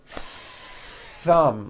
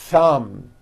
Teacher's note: notice how long I'm holding the th sound